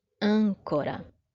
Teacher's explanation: A antepenúltima sílaba dessa palavra é mais forte. É justamente a nossa sílaba tônica.